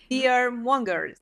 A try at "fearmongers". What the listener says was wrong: Ooh, fear-monger. So close. I was looking at that R and M. That's perfect. Fear-monger. Just that last O. Mongers.